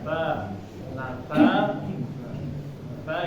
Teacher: Ta ini enggak terlalu mendesis ya Enggak seperti Huruf sa